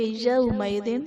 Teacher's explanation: واو کو ہم کھینچیں گے نہیں، یو نہیں پڑھیں گے بلکہ یومئذ بغیر کھینچے بغیر جھٹکا دیے نرمی سے معروف پڑھیں گے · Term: واو لین